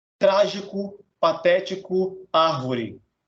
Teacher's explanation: A sílaba tônica é a antepenúltima. Não é a última, não é a penúltima, é a antepenúltima. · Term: proparoxítonas